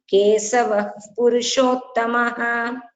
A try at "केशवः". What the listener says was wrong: So when you're reading, when you're chanting, just give the stress only on that letter, because Narasimha vapu Shriman came correctly. It became Kesavah, Keshavah. Keshavah Purushottamah.